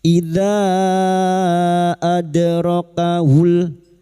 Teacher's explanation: Idza adrakahul ada dal sukun, huruf dal yang mati asli di dalam kalimat qalqalah sugro, jangan lupa dipantulkan